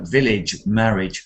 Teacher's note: we have an AGE, which is a kind of idge sound at the end